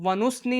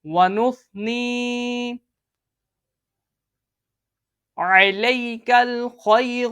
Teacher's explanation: زبان کی نوک اور اوپر کے دانتوں کے اندرونی کنارے پہ جب آپ زبان کی نوک لگائیں گے تو اس کی ادائیگی ہوگی، اس میں سیٹی کی آواز نہیں آئے گی